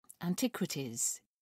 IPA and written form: ænˈtɪkwɪtɪz (antiquities)